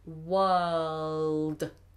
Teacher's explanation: Make sure you get that dark L in there.